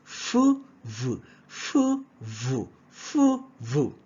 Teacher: We also have labiodental. Labio from lips, and then dental, teeth, all right, the bottom lip and the upper teeth.